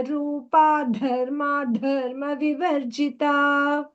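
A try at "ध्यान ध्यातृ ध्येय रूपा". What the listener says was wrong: So when that dhyaya rupa comes, make the ya sound prominent and not simply dhyaya rupa, not dhyaya, dhyaya. Ya also has to be heard. So dhyana, one dvitva, dhyatrat, and second dvitva. Then that dhyana's dha, dhyatru's dha, dharma, dharma's dha and dha.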